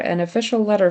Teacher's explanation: the word an isn't clear in fact he might have just not said it an official letter an um he's saying wet for vet so